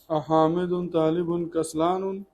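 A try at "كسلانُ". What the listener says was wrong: कसला, अब यहाँ पर कसलानुन नहीं पढ़ेंगे, कसलानु, तो ये रूल से हटा हुआ लफ्ज है, इसको साइड में ले लेंगे, है ना।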